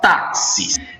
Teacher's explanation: Você veja que a sílaba mais forte é a segunda, de trás para frente, ou seja, ela é uma palavra paroxítono.